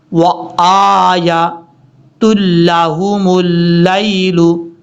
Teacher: لام کے بعد جو یا ہے یہ یا لین ہے، اس کو لمبا نہیں کرنا